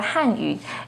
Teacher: with the fourth falling tone on han